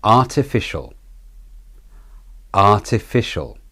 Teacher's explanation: artificial yes the r t and fish are the stressed syllables the fish being the main stressed syllable the shul is the de-stressed syllable with the schwa vowel replacing the a in shul